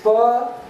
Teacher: The air is blocked behind lips and immediately released. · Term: plosive